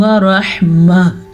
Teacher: وقف کریں گے تو ہا کی آواز ضرور آنی چاہیے۔